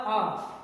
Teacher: ये जो आ आता है हमारे गले के पिछले हिस्से से आता है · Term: पश्च स्वर